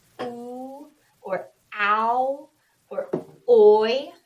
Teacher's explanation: Sounds like ooh. Really, if you say it real slow, it's two different vowel sounds that are kind of smooshed together. We count it as one sound. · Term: diphthong